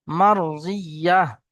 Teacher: এখানে ওয়াকফ করার কারণে সাকিন হয়ে যাচ্ছে, গোলতা হা হয়ে যাচ্ছে